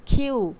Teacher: কে বলছি না খেই তো সেরকম এটা কি হবে খিউ হবে ক এর বদলে খ বলতে হবে